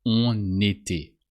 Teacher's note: don't forget to pronounce the N of on when the following word starts with a vowel. Here, the E of été.